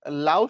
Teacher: লাউ শব্দের দুটো স্বরধ্বনি আছে। লা এই আ হচ্ছে পূর্ণ আর উ হচ্ছে অর্ধ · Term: দ্বিসরধ্বনি